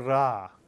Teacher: Israelis will roll the resh, similar to the way French speakers roll a French R. And you can either roll the resh, R, or not.